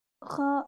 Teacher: जुबान की जड़ को तालु की तरफ बुलंद करते हुए मोटी आवाज में पढ़ें।